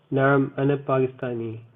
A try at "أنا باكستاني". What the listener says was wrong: So remember in Arabic there's no pa, there's ba.